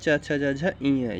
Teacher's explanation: च वर्ग च वर्ग को मतलब तालव्य से बोला जाता है